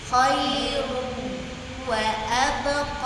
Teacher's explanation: kalau ada tanwin pun bertemu dengan wau itu bunyi tanwinnya langsung masuk ke wau